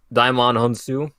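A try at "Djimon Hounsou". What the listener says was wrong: Well, I think there's a J there, isn't there? I'd pronounce it Jaimon Honsu, but that probably means it's wrong. Jaimon Honsu.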